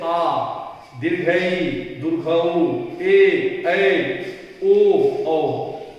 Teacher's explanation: ये वे स्वर हैं जिनके उच्चारण में ह्रस्व स्वर से लगभग दुगुना समय लगता है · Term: दीर्घ स्वर